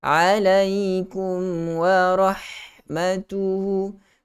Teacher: baca dengan jelas pada huruf mim dengan memberikan sedikit sifat gunnah padanya. Dan hati-hati jangan sampai termasuk, jangan sampai idghamkan mim ini ke dalam huruf waw. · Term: Izhar syafawi